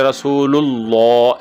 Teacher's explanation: اور آخر میں بھی رسول اللہ کرنا ہے، رسول اللہ، یعنی لام کے اوپر زبر نہیں، پیش پڑھنی ہے، اور لام لفظ اللہ کی جو لام ہے اس کو موٹا پڑھنے کی کوشش کرنی ہے، رسول اللہ ایسے پڑھنے کی کوشش کرنی ہے، اور آخر میں ہا بھی اگر واضح ہو جائے تو زیادہ بہتر ہے کیونکہ وہ ساکن ہو جائے گا۔